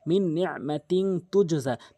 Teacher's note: নুন আসলে মিন উচ্চারণ করব প্লাস গুন্না করব